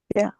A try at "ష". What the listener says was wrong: Tongue first fold. Fold ఇంతవరకు ఇట్లా పెట్టి అప్పుడు సౌండ్ చేయాలి. కాదు, మీరు సౌండ్ చేసినాక పలుకుతున్నారు, అది పెడుతున్నారు. టంగ్ని మొత్తం మధ్యలో పెట్టండి. మధ్యలో ఉందా? లేదు, లేదు. ఈ టంగ్ని అమ్మ ఇక్కడ చూడండి. ఈ టంగ్ని ఇలాగే పెట్టి నోరు ఓపెన్ చేసింది ఉందా లేదా? ఇది మూసుకొని ఉందా? ఇట్లా ఓపెనే ఉన్నది. ఇట్లా టంగ్ ఫస్ట్ పైకి పెట్టండి, నోరు ఓపెన్ చేయండి.